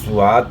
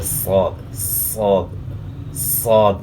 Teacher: اور موٹا ادا کرنے کے لیے ہونٹ استعمال نہیں کرنے، بلکہ زبان تالو کی طرف اٹھے گی، اور خاص کر زبان کا بیچ تالو کی طرف اٹھے گا